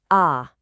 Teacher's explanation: Our very first simple final is ah. It's a nice open sound just like the ah in the word father.